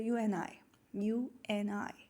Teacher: i didn't pronounce the d sound